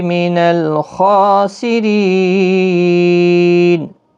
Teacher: را زیر کی وجہ سے باریک پڑھا جائے گا. ری یا مدہ بھی ہے.